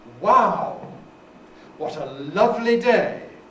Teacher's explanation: one way in is to make them think about exclamations because exclamations have a fall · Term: falling tones